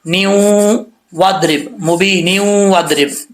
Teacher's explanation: اگر ملا کے پڑھیں گے آگے تو پھر نون کے نیچے 2 زیر ہیں، اس کو واو کے ساتھ کنیکٹ کرنا پڑے گا، چاہے واو کے اوپر شد ہو یا نہ ہو.